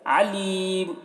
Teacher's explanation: आइन को हलक से अदा करेंगे। अलीम, अब यहाँ पर देखिए वक्फ़ कर रहे हैं तो मीम की जो दो पेश की तनवीन है वो सुकून से बदल जा रहा है, और यहाँ पर हर्फ मद या है, हर्फ मद के बाद सुकून वक्फ़ की वजह से है तो यहाँ पर मद्द आरिज़ वक्फ़ी होगा।